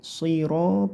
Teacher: Shotnya bacakan tebal dengan cara pangkal lidahnya terangkat ke atas atau lidah bagian belakang terangkat ke atas. Terus ada seperti mencucu meringgisnya sedikit, siro, biar terdengar tebal ya.